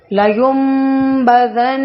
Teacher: لیمبذن اقلاب کیا جاتا ہے. یہاں پہ ذن نون مشدد ہے تو غنہ کے ساتھ ادا کریں گے